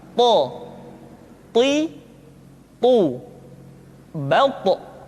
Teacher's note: To diucapkan dengan menyentuhkan ujung lidah dengan gusi-gusi dua gigi seri bagian atas. Sifat yang dimiliki oleh huruf to yang mesti nampak ketika kita ucapkan adalah sifat al-isti'la dan sifat al-itbaq. · ketika to diucapkan, suara kita terdengar menebal